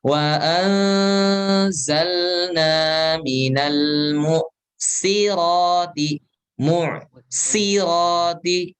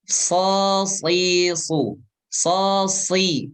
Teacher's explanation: huruf sin dan shad itu satu makhraj, satu tempat keluar